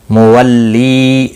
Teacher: وَلِكُلٍّ تنوین کے بعد حروف ارملون کا واو آیا ہے، ادغام باگنہ ہوگا، جیم ساکن پر قلقلہ ہوگا، تنوین کے بعد ہا آیا ہے، اظہار حلقی ہوگا۔ مولی لی یا مدہ ہے، ایک الف کے برابر کھینچ کر پڑھیں گے، ہا الف مدہ ہے، فا الف مدہ ہے، ہا الف مدہ ہے، ایک الف کے برابر کھینچ کر پڑھیں گے، فا سین کے ساتھ ملے گا۔